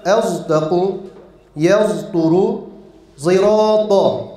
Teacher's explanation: Sad harfine zay yani z olarak bildiğimiz harfi koklatıyoruz. Yani sad harfine Z harfini karıştırarak okuyoruz. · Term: Sad-ı Müşemme